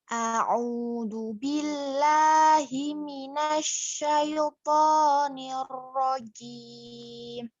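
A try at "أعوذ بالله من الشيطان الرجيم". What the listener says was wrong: A'udzu billahi minasyaitonir rajim. Nah, sudah lumayan bagus, cuma di huruf zal. Nah, zal. A'udzu. A'udzu. Nah, yang pertama ini hamzah ya.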